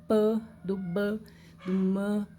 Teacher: existem sons conhecidos como bilabiais, porque são produzidos lá com um lábio tocando no outro, tá? No caso do p, do b, do m, certo?